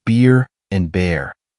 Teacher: the R sound is pronounced differently than in British English or other languages. It's more pronounced and often retroflexed. Practicing minimal pairs, such as beer and bear, can be very helpful.